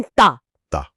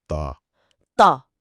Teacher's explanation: एक आवाज पतली है, दूसरी बहुत भारी और गोल है।